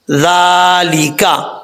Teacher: یہ زال ہے، بغیر سیٹی کے ساتھ پڑھا جائے گا